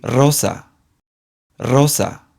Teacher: the strong sound has a rolled R sound much like the stereotypical R Spanish sound